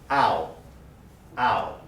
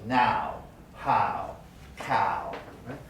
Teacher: the low central vowel followed by the high back vowel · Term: diphthong